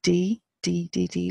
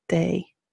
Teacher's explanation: the D is not a hard dee-dee-dee-dee like in English it's day so it's more like a hard th